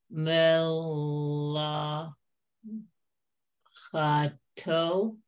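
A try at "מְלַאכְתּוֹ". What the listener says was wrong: Okay, better to say, not to pronounce the schwa here. Melachto.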